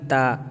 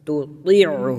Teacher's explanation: پہلا والا باریک ہوگا تا، اور دوسرا موٹی آواز میں